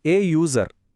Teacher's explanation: ಇದು ಯು ಇಂದ ಶುರು ಆದರೂ ಇದರ ಸೌಂಡ್ ಯ ಅಂತ ಬರುತ್ತೆ ಯ ಅನ್ನೋದು ವ್ಯಂಜನ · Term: ವ್ಯಂಜನ ಶಬ್ದ